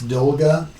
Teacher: this first o sounds like a o but this last o sounds like a a and they call that Russian vowel reduction in their grammar that